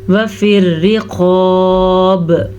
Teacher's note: را کو باریک پڑھیں گے کیونکہ را کے نیچے زیر ہے. قاف کو ہم پر پڑھیں گے، موٹا پڑھیں گے، قاف ہمیشہ ہی موٹی پڑھی جاتی ہے.